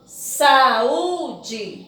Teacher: sílabas né ó aqui a última aqui a penúltima ea antepenúltima então a minha sílaba forte da palavra saúde é a penúltima · a minha sílaba forte da palavra saúde é a penúltima. Então, quando a sílaba forte de uma palavra for a penúltima, ela é chamada de paroxítona. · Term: sílaba tônica